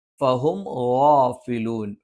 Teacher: ഫ മേലെ മുൻപല്ലിന്റെ താഴ്ഭാഗം താഴെ ചുണ്ടിന്റെ പള്ളയിലാണ്.